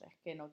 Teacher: aspiración de la s al final de la sílaba